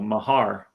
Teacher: he pronounced it with the emphasis on the second syllable, Mahar. And I've heard that as well.